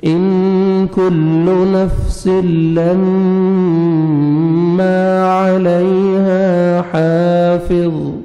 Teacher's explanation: نون ساکن کے بعد حروف اخفاء میں سے کاف ہے, آپ نے نوز میں ساؤنڈ لے کے جانا ہے, کاف کو بریک کر کے پڑھیں گے.